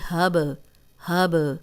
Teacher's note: با پہ بھی جزم آ گئی ہے تو ہم ہلا کے پڑھیں گے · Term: قلقلہ